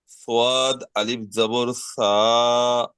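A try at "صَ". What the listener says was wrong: সদ আলিফ যাবার স, সা নয়, স।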